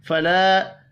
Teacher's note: الف مدہ ہے، 1 الف کے برابر کھینچ کر پڑھیں گے